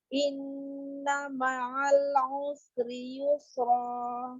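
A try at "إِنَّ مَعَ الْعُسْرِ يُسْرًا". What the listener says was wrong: Nah, tawasudnya kurang. Inna ma'al usri yusra.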